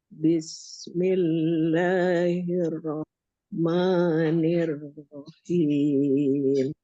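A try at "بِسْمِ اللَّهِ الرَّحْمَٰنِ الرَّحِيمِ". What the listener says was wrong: yang hirnya hirro tekan dobel Coba diulang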